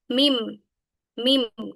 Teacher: Nah, ini termasuk juga dengan huruf gunah ya karena ee dia keluar dari rongga hidung. Jadi ketika melafalkannya mau enggak mau dia akan masuk ke rongga hidung.